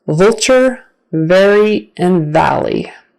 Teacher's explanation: your top teeth are going to be touching your bottom lip and it might just be barely but it's got to be there · it's gonna vibrate it's gonna tickle so V is voiced and it's at the beginning of words like vulture very in